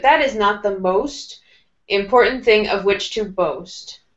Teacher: with most, let's make your voice go down a little bit